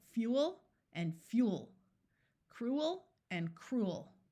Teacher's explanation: in much of the US these words are pronounced as one syllable so you will hear both Fuel and fuel cruel and cruel